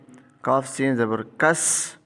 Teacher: تو سین کے اندر سیٹی ہوتی ہے